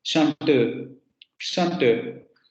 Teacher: Pero, por ejemplo, cuando pronuncian la vocal final en esta vocal, como en los tiempos verbales, chanteau, chanteau, ustedes generan ese redondeamiento parcial de los labios al final.